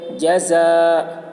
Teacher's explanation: حرف مد کے بعد حمزہ اسی کلمہ میں ہے، اس لیے مد متصل ہوا، مد متصل کو 3 یا 4 الف کے برابر کھینچ کر پڑھیں گے